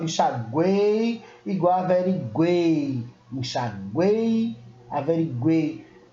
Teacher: Eu quase não utilizo o U e o I, eu forço mais o E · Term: tritongo